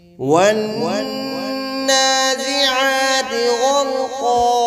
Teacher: نون مشدد ہے، اس پہ غنہ ہوگا، ایک الف کی مقدار کھینچ کر پڑھیں گے، کھڑی زبر ہے.